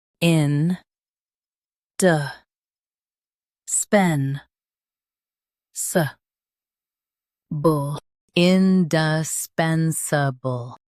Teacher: Stress pen. Keep d and s soft.